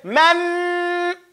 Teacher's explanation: you hear the air that you're holding in your nose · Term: ghunna